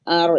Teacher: karena ro mati didahului oleh huruf harokat fathah maka dibaca tebal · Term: Ro taf tafkhim